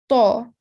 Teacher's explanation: The tongue is raised to make it thick and heavy.